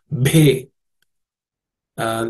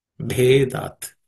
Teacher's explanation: This bhe is the fourth letter in the pa class of consonants, so it has to be aspirated.